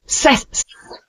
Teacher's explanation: the tongue touches the teeth lightly while pronouncing it's a soft s sound